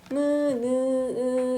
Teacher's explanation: 자, 그럼 비강음은 여린 입천장은 목적을 내려서 공기가 코로 들어가게 해서 내는 소리. 무느으 약간 콧소리야. 무느으 할 때. 알겠죠? 코가 울려. 무느. 그래서 얘네는 울림 소리라고도 얘기합니다.